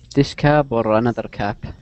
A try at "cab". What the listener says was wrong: That's actually pronounced cab. A taxi cab, and that's with a B. Taxi cab. Okay? Cap would be with a P.